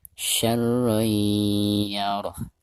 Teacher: Di sini huruf ya dan termasuk idgham bigunah. Maka cara membaca tanwin yang ada di atas ro tersebut itu harus diidghamkan disertai dengan gunah